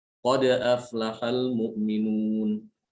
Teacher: Sifat dal qalqalah. Harus diberikan qalqalah, cuma qalqalahnya dia itu ringan ya, tidak berat.